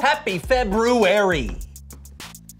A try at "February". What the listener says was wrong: Did you say February? I know there's an R there, but most people don't pronounce it. Actually, the extra R comes from the original Roman calendar when it was called Februarius.